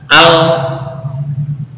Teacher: Makhraj lam ujung lidah dengan gusi atas.